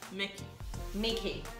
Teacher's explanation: Não tem o EI no final, é I.